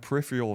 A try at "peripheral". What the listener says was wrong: You missed that last R. Peripheral. Peripheral.